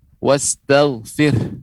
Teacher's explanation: ketika pengucapannya wastaghfir, ada keluar nafas lebih banyak, yaitu pengucapan h di ujungnya, wastaghfir ya, ada keluar h. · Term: huruf h yang disukunkan